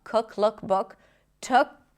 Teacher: Then we have the lax uh cook.